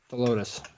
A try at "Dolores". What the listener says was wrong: Yeah, no T at the end. Cannon with Cannon. Cannon.